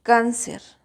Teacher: la mayor fuerza de voz está en can